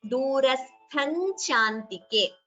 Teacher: Here durastham, tha is mahaprana.